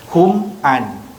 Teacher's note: Mi mati, tutup mulut, terus sebut huruf yang seterusnya. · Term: izhar syafawi